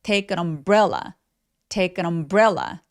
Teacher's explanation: umbrella는 강세가 bre 부분에 오기 때문에 첫 번째 소리인 부분에서 힘을 쫙 빼주셔야 돼요. 그래서 take an 여기까지가 덩어리로 소리가 납니다.